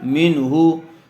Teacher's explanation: بعد حروف حلقی میں سے ہا آیا ہوا ہے، اس لیے بغیر گننے کے جلد اظہار کر کے پڑھیں گے۔